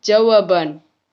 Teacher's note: Contoh lain, dalam proses pengimbuhan sufiks an pada dasar jawab akan terjadi pergeseran letak bunyi b ke belakang membentuk suku kata baru. Contohnya, jawaban ditambah an menjadi jawaban.